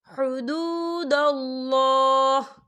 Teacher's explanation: وقف کی صورت میں ہا جو ہے وہ ساکن ہو جائے گا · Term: وقف مطلق